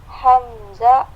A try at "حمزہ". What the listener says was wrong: نہیں آخر میں ہاں لے کے آئیے. حمزہ.